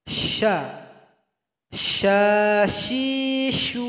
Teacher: keluarnya yaitu Tengah lidah taruh ke langit-langit syaa Syaikh ada angin yang mengalir atau nafas yg mengalir huruf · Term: huruf tsa